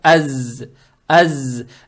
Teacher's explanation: Фатху произносим как мягкий звук а. Далее стоит буква за, она обычная, не межзубная, с сукуном, получается аз.